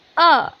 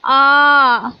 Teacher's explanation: छोटा अ बोल रहे हैं तो केवल अ जल्दी से बोल रहे हैं इसको